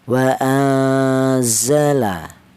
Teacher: Untuk contoh ini yaitu iknya ifa afsat. Jadi cara bacanya itu pertengahan, tidak terlalu samar juga tidak terlalu dengung. · Di sini ada lafaz wa anzala yaitu ada nun mati bertemu dengan huruf za. Ini dibaca ikhfa. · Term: ikfa aufsat